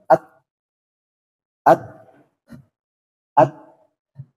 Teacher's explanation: kalau ta, dia punya sifat namanya hamas. Nah, dia ditekan, kemudian keluarkan udaranya. Ha, ha. Nah, kalau dia sukunkan, at, at, at.